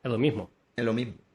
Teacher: Hay, por ejemplo, muchos sitios que no pronuncian la S,